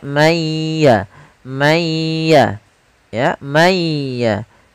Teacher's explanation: suara nunnya dihilangkan sebagian tapi masih menyisakan sedikit huruf nunnya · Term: idgham